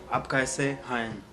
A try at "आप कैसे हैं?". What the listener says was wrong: And why you are making a gap like कैसे and stop and hi?